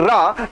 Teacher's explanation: अच्छा हम जो रा कहते हैं, मेरी बात ध्यान दीजिए, रा जब रा झटके में कहते हैं रा तो हमारी जिभिया क्या करे लगती है? अरे भैया हमारी जिभिया कांपे लगती है, मतलब कंपन करने लगती है। भैया उसी कंपन के 2 नाम हैं बच्चा, चाहे उसे प्रकंपित व्यंजन कहिए या चाहे उसे लुंठित व्यंजन के नाम से जानते हैं।